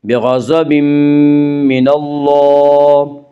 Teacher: من اللہ میں اللہ کا لام پر پڑا جائے گا